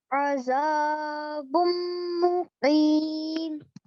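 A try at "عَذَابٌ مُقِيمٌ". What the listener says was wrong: Just hold the gunna a bit longer, bit longer.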